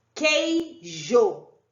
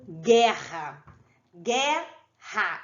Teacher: o som do u não é pronunciado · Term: dígrafos